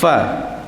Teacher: huruf fa ni, jadi kita keluarkan satu hembusan, itu hamas pada sifatnya